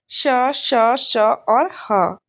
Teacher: इनके उच्चारण में वायु के रगड़ खाने से एक प्रकार का ऊष्म सा पैदा हो जाता है और इसीलिए इसको ऊष्म व्यंजन कहते हैं।